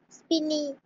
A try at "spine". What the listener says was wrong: Spine, It's not spinny or spin, it is spine.